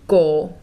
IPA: koː